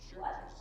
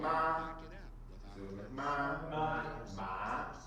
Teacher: Can you feel your voice going up as you say that? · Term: second tone